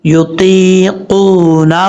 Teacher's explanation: ہا الٹا پیش ہو، یطیقونہ، ہا کے اوپر الٹا پیش ہے، اس کو ایک الف کی مقدار لمبا کر کے پڑھیں گے